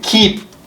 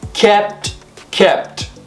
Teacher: first, the long E changes to a short E